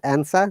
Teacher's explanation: r is replaced by the vowel sound